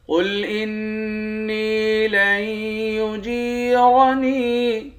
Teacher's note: قاف کو موٹا پڑھیں گے، نون مشدد پر غنہ کریں گے